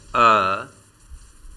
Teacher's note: स्वर अ के उच्चारण में जिह्वा का मध्य भाग लेता है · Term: मध्य स्वर